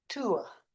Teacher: There might be an R in the word, but we don't say it. Notice any sound that has a schwa at the end of it will be non-rhotic as well. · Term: non-rhotic sound